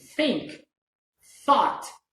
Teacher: in this case my mouth is not vibrating okay so it means that this is voiceless sound